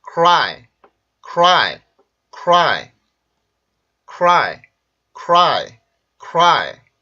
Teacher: 폐쇄음이고 R 발음이고 강세 모음입니다. 그러면 R 발음으로 인해서 K 발음이 영향을 받겠죠. 그러면 크라이, 우리가 일반적으로 쓰는 크라이가 아니라 오히려 요거에 가까운 소리가 되겠죠.